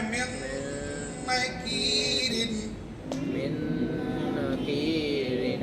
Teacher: ایک الف کے برابر وہاں پر ٹھہریں گے، رکیں گے، غنہ کریں گے، ناک میں آواز جائیں گے، ناک کی نرم ہڈی، ناک کے باسا تک آواز جائے گی.